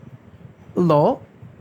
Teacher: পার্শ্বিক ধ্বনি বলার কারণ এই ধ্বনিটি উচ্চারণের সময় জিভের 2 পার্শ্ব দিয়ে বাতাস বের হয়, এই জন্য এই ধ্বনিটিকে পার্শ্বিক ধ্বনি বলা হয়। জিভটা একটু চ্যাপ্টা হয়ে 2 পার্শ্ব দিয়ে বাতাস বের হয় বলে এটি পার্শ্বিক ধ্বনি